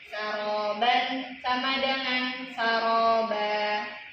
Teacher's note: Kalimat aslinya saroban. Ketika diwaqafkan dia berubah menjadi panjang tanwinnya hilang. Ini namanya inwat.